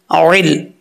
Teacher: عین کو عین کے مخرج سے ہی نکالنا ہے. حمزہ کی آواز نہیں آنی چاہیے